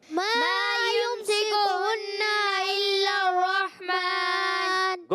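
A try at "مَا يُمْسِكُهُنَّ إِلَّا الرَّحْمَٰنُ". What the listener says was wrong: Good.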